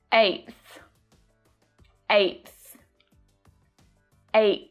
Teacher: can you hear that stop T sound at the end of 8 before I make the TH sound? I'm not saying 8, but 8, 8.